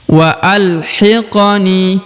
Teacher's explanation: huruf qof karena berharakat sukun maka dibaca pantul atau dibaca Qalqalah karena huruf q yang berharakat Sukun adalah huruf huruf-huruf pantul ya · huruf ni dipanjangkan dua harakat karena di depannya terdapat ya sukun atau ya mati